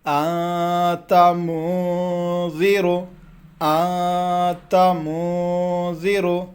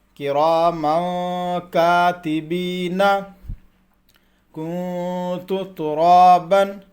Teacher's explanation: ناک میں آواز کو روکنا ہے، 1 الف کے برابر روکنا ہے ناک میں آواز کو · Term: اخفا